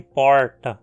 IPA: pɔɻtɐ